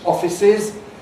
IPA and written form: ˈɒfɪsɪz (offices)